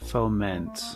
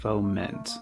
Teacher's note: the emphasis is on the second syllable